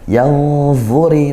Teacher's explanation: Nah, ini hurufnya dibaca kemudian nun sukunnya dibaca samar samar-samar ke huruf dengung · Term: Ikhfa hakiki